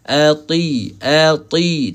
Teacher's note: tebalkan huruf ta. Jangan baca dengan ati